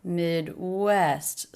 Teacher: Stress is on the second syllable of that word.